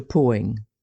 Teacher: in the Pittsburgh area the L seems to have been dropped